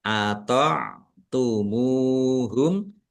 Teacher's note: Dibaca jelas. Ain sukun ya, ata'tumu ya, agak berat di tenggorokan.